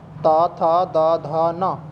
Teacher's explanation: ऊपर के दांतों से हमारी जीभ टकराएगी तो हम कह देंगे ये दंतीय व्यंजन है, यानी पूरा तय वर्ग दंतीय व्यंजन होता है।